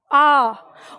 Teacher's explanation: इसका उच्चारण पीछे जो आपका कंठ है वहीं से आएगा आ, और इसमें पूरा मुंह खुलता है आ। ठीक है, तो इस तरह से ये अ और ये आ।